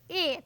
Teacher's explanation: तो ए देखिएगा कंठ और तालु दोनों से होता है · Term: कंठ तालव्य